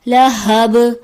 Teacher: با حرف قلقلہ میں سے ہے اس لیے اس کی آواز پلٹ کے واپس آئے گی